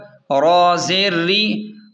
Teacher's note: را کے نیچے زیر ہے، اس لیے را کو باریک پڑھیں